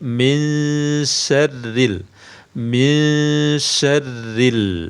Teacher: Mengapa dibaca tipis karena nun sukun bertemu syin dalam hal ini huruf syinnya memiliki sifat istifal dan infitah · nun sukun bertemu syin hukumnya ikhfa hukumnya ikhfa dibaca samar Min samarnya tipis samarnya tipis bukan bukan tapi minyarril minyarril ya